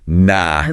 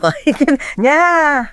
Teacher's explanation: those vowels are often drawn out